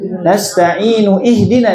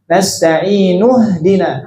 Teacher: hamzah wasol ini kalau diwasol hilang hamzahnya kalau disambung, tapi kalau mulai dari hamzahnya muncul ada bunyi hamzah i.